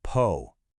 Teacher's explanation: The big trick here is that little explosion of air for the p sound. Go ahead, put your hand in front of your mouth.